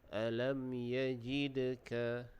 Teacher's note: di situ ada qalqalah sughra, huruf da tu kita lantunkan